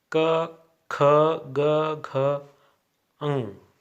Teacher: ये सभी वर्ण हैं कंठीय हैं, क्योंकि इनका उच्चारण स्थान कंठ